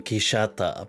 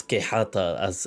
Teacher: the X back then was a kind of sh sound, which later on becomes a h.